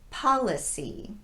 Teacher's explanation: this is the unrounded ah sound